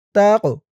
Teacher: কফটা কলকলার হরফ ধাক্কা দিয়ে পড়তে হবে